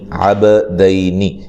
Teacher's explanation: عین زبر با، عب، دال زبر یا دئی، عب دئی، نون زیر نی، عب دئی نی۔ یہاں با قلقلہ ہے، با کو ہلا کر پڑھیں گے اور یہ یا لین ہے، ٹھیک ہے، نون کو لمبا نہیں کریں گے۔